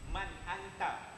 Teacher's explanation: Tak, dia tidak akan boleh dengung. Dia izhar nyata, jelas, tak boleh dengung.